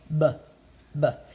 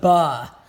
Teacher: And when you're, as the teacher, when you're making the b or the f sound, you can't say b, because that's not really it. You need to say b, not the ba. Okay, it needs to be clipped.